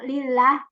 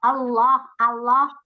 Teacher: kalau lillah tipis kalau Allah Allah itu tebal